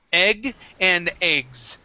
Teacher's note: So here we're going to pronounce that more like an A sound. Egg and eggs with a Z at the end. That S is going to be a voiced S sound.